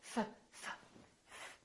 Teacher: There's no vibration in my vocal cords, so the F is actually a voiceless sound.